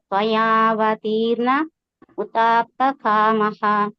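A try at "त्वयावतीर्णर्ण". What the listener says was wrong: మాతాజీ ఇక్కడ రెండు అర్ణాలు ఉన్నాయి చూడండి. త్వయావతీర్ణర్ణ రెండు సార్లు అనాలి.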